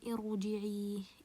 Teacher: the ra here is sakin and preceded by hamzat al-wasl, I will make it heavy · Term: ra will be heavy